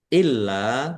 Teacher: lamnya ada tasdidnya dibaca dobel ditahan ditekan dan ditahan biar tampak dobelnya. Lam fathah alif mad thobi panjang dua harakat.